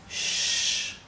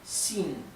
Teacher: Me faltaba explicarles cómo se pronuncia la X en el pinyin. La X se pronuncia como una SH inglesa, así, shh, pero un poco más tendiendo a una S. Y en algunas partes de China directamente lo pronuncian como una S más suave, s, s, ¿sí?